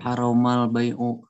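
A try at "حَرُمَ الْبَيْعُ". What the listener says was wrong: Bukan haroma, haruma. Harumal bai' fi waqti salatil jumu'ah.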